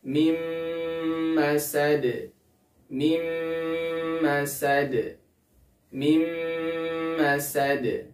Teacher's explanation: masad di sini ada nun sukun bertemu dengan huruf mim maka dia harus dimasukkan Nun sukunnya ke huruf mimnya serta ditahan selama dua harakat dan disertai dengan gunah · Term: idgham bi gunnah